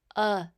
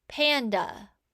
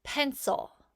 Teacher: schwa sound can be made by any vowel including Y and it says the uh sound it's super lazy we use schwa sounds for unaccented syllables